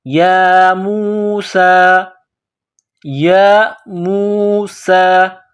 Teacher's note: سین کو باریک کرنا ہے، سیٹی کی آواز پیدا کرنی ہے